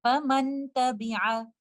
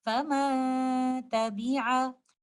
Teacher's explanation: I have to do ikhfa of the oral part of the noon sakina and I will only give the gunna. I will give the timing of complete gunna and recite it like this.